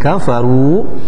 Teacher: ru-nya dibaca tafkhim tebal dan ru-nya dibaca dua harakat karena termasuk hukum mad tabi'i.